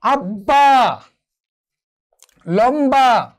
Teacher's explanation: ব এবং ম এর সঙ্গে যদি ব ফলা যুক্ত হয় তাহলেও সেই বয়ের উচ্চারণ অবিকৃত থাকবে